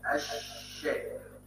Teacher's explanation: صفه الحرف الذي بعدها فدخلت لام كلمه الشيطان على شين الشيطان فصارت اللام والشين حرف شين ساكن و ملتصق به حرف شين مفتوح وكانه ما حرفا واحدا شين وكانه ما حرفا واحدا مشددا ومفتوحا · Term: اللام الشمسيه